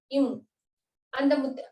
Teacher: இந்த எழுத்தை வந்து நாம் வாயை திறந்து சொல்ல முடியாது வாயை மூடி இருக்கிற வாயை க்ளோஸ் பண்ணி தான் அந்த எழுத்து நாம உச்சரிக்க முடியும் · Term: ம் பேசா எழுத்து